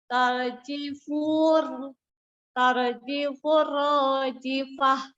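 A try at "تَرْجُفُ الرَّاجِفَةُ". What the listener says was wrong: Bukan tarjifu, coba dilihat lagi.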